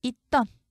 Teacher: 쌍시옷 대표음 디귿으로 바뀌고 이어지는 디귿이 된소리로 바뀝니다.